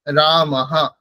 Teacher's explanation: শান্তি হ করলে কিন্তু উচ্চারণ হবে না যখন অকার থাকবে আগে বিসর্গের ঠিক আগে যখন অকার থাকবে তখন সেটা হতে পারে রামাহা এরকম উচ্চারণ হবে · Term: বিসর্গের উচ্চারণ